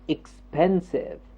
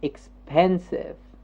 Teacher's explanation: the pen jumps up